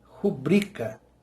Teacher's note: A tônica está em bri, rubrica.